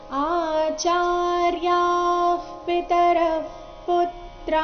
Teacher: ವಿಸರ್ಗದ ಉಚ್ಚಾರಣೆ ಅರ್ಧ ಪ ತರ ಬರಬೇಕು